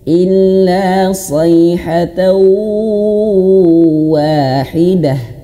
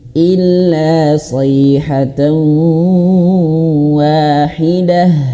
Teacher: Masuk ke huruf Wau dan masukkan ke dalam hidung. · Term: idgham maal ghunah